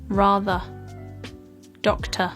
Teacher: of these words with the uh sound at the end where there's this very neutral sounding vowel that is known as the schwa sound this R sound can essentially be produced if you just relax